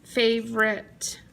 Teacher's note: we don't hear a long I, and it actually has three syllables. Favorite, so it goes in the oddball.